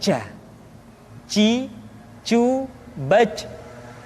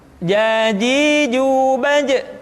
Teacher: Kesalahan yang sering muncul ketika mengucapkan huruf ja adalah mengalirnya nafas. Ja, ada nafas yang mengalir.